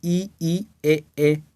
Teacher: अग्रस्वर यानी कि जो जीभ के आगे भाग से बोलते हैं